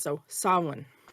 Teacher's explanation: You're not fully making the M, and you're kind of blowing through it.